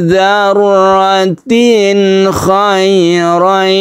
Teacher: Dzarratin ini malah tidak berdengung karena tanwin bertemu dengan kha, kita sebut dengan izhar, namanya izhar halqi.